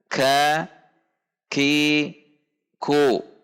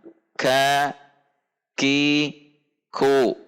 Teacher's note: Yang pertama adalah al-mahmus, yang berarti samar. Ketika berharokat dibunyikan dengan mendorong udara. Namun demikian, dalam hal ini tidak boleh berlebihan karena sifat yang kedua dari sifat huruf kaf adalah asyiddah.